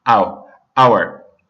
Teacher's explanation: the H sounds silent and it just sounds like we're saying hour. That starts with the phonetic vowel sound O.